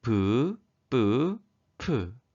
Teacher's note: 브, 뿌, 푸는 두 입술이 닿았다 떨어지며 나는 입술 소리였습니다